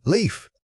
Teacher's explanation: Remember to sustain that e sound slightly longer than you might think. It requires opening your mouth fully and keeping the airflow steady through the consonant sounds at the end.